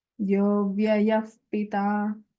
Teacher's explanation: Here Anuswara takes a nasalized ya. And then the Visarga changes to Upadhaniya sound.